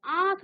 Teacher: जब आप आंख कहेंगे तो आपके नाक और मुख दोनों से ही वायु बाहर निकलेगी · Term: अनुनासिक